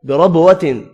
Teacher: بربوۃ را پر پڑھا جائے گا، با ساکن پر قلقلہ کریں گے